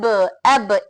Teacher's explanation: कलकला की वजह से आवाज एक्स्ट्रा वॉइस आ रही है